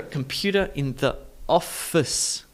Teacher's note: With the ER endings, Americans have quite a strong sound, whereas Brits and Aussies would say computer, computer, especially Aussies.